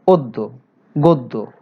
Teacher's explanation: 2, শব্দের পরে, শব্দের আদ্য অ এর পরে যদি জফলা থাকে, জফলা যুক্ত ব্যঞ্জন বর্ণ থাকে, যেমন দেখো অদ্য, গদ্য, এ জাতীয় শব্দে আমরা দেখব যে অ এর পরে যে বর্ণটি আছে তার সাথে জফলা রয়েছে, এই জফলা থাকার কারণে অ এর উচ্চারণ ও হয়ে গেছে